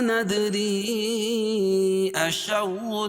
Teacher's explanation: اور حروف مدہ کے بعد حمزہ جو ہے دوسرے کلمے میں تو مد منفصل ہوتا ہے، اس میں توسط ہے اور قصر بھی جائز ہے